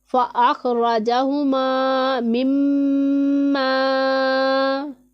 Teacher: میم مشدد ہے، شاد والا حرف 2 مرتبہ پڑھا جاتا ہے، ایک مرتبہ اپنے سے پہلے متحرک حرف کے ساتھ ملا کر، اور دوسری مرتبہ خود اپنی حرکت کے مطابق ذرا رک کر